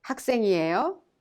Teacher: you must raise the tone at the end of the sentence to make it sound like a question.